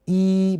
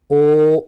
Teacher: ای بولتے وقت زبان آگے کی طرف ہے، جبکہ او بولتے وقت زبان پیچھے چلی گئی. تو کبھی زبان آگے بھی ٹریول کر رہی ہے واول بولتے ہوئے، واول بولتے ہوئے زبان پیچھے بھی ٹریول کر رہی ہے.